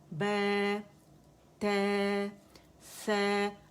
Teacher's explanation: ٹھیک ہے, الف با تا سا, آواز اوپر جائے گی, بے تے سا امالہ نہیں کریں گے